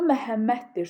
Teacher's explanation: söz sonunda d gəldiyi zaman Məhəmməd və özündən sonra samitlə başlayan şəkilçi gəldiyi üçün D t kimi tələffüz olunur. Yəni kar tələffüz olunur.